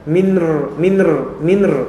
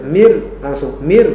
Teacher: Jadi langsung apa? Langsung dileburkan ke ra dan nun tidak dibaca. Maka antum jangan baca minr, salah. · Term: idgham